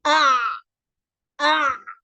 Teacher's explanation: apabila kita menyebut huruf Ain akan berlaku penolakan yang kuat sehingga hampir-hampir tidak ada laluan